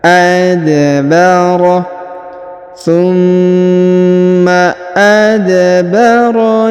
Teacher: Ma ditahan dan ditekan karena terdapat tanda tasdid ya tumma adbaro huruf da berharakat sukun maka kita pantulkan